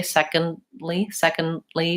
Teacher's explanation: an American will say second secondly where they're making that stop T in there